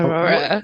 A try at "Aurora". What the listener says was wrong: Aurora. Because you're like, yeah, you're speeding through that. Aurora.